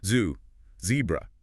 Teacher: The Z. In English, it's a buzzing sound.